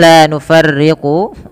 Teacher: la nufarriqu yang rnya itu dibaca dengan tipis